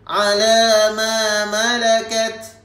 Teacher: Okey, ta pada kalimah ni kita dibaca dengan hamas. Okey, hamas ni maksudnya hamas ni sedikit sahaja kita melepaskan.